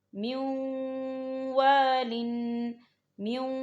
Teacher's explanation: جو نون ساکن بیچ میں آپ کو نظر آ رہا ہے اسے ہم واو کے اندر مدغم کریں گے اور یہاں غنہ بھی ہوگا